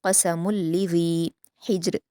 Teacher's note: हिज्र में हा को हलक से अदा करेंगे, जीम पर क़लक़ला करेंगे · क़ाफ़ को पूर पढ़ा जाएगा और मीम की तनवीन को लाम से मिलाकर पढ़ेंगे, इदग़ाम करेंगे